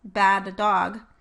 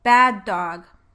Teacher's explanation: For example, in the phrase bad dog, I would probably not make two separate D sounds with the release between them, like this, bad dog. Instead, I might make an extra long D sound in order to show that there were two Ds.